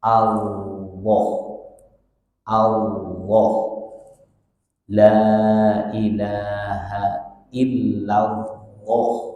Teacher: huruf yang benar lafdul Jalal n itu kalau kita ngucapin itu lidah atas itu ditempelin ke langit-langit bagian atas gigi seri